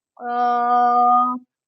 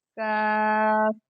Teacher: قاف کو موٹا پڑھیں گے، کاف کو باریک پڑھیں گے